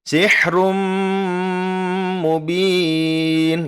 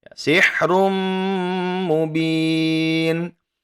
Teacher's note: yang terakhir ya kita mendapati bahwasannya dhommah tanwin bertemu dengan mim maka disini berlakulah ya Idgham Bighunnah ditahan selama dua harokat serta kita dengungkan